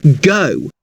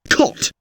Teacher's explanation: the long variety is found in words like go, whereas the short variety of the same vowel is heard in words like cot.